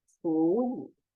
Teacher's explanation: whenever there are 2 third tone words, the first one has to read as second tone.